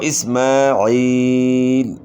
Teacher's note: یا ساکن سے پہلے زیر ہے، یا مدہ ہے تو ایک الف کی مقدار کے برابر مد ہوگا